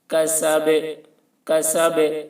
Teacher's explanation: با میں قلقلہ، آواز ٹکرائے گی